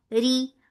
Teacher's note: Raw will be light here because there is kasra on it.